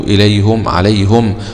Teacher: ضم الهاء حمزة ويعقوب